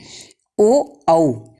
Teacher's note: ओ औ, इन दोनों वर्णों का उच्चारण स्थान कंठ और होठ होते हैं।